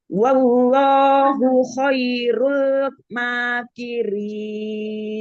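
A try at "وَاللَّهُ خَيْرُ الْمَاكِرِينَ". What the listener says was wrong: Ya, lamnya lebarin lagi ya. Wallahu khairul makirin.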